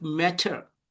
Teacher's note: So in British accent, this word which is written in front of you, that is meta. So they don't pronounce this ending sound, R sound.